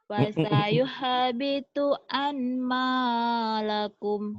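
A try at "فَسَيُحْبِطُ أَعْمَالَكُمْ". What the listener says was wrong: Kan gak ada nunnya. Kenapa jadi ada an? A'malakum.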